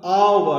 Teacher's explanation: আওয়ারের ক্ষেত্রে এইচটা কিন্তু উচ্চারণ হচ্ছে না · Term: এইচটা কিন্তু সাইলেন্ট